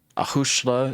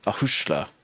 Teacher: there's a slender vowel, and so the S becomes a sh sound